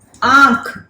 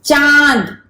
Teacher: अब आप जिस लेटर पे भी देखेंगे, जैसे एक वर्ड है आंख, तो आप अगर आ बोल रहे हैं तो आप मुंह भी खोल के रखते हैं और नाक से भी साउंड आ रहा है, तो मुंह और नाक दोनों से अनुनासिक को प्रोनाउंशिएट किया जाता है